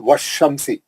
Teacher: then alif and lam will not be pronounced, but will be joined with the letter after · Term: huruf shamsi